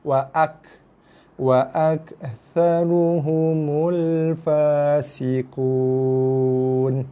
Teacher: Yang betul ak, dia ada keluar sedikit hembusan nafas. Tekan sikit dekat kaf, kat bunyi kaf tu, kemudian lepaskan sedikit hembusan nafas. Dia akan keluar bunyi angin. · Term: huruf ka mati